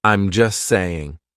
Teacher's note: We drop that T. We do not pronounce it. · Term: silent T